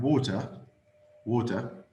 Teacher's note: some uh americans pronounce it like a d